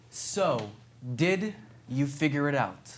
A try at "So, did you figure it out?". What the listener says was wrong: See, then you made figure it out one word, and it's not one word. It's three.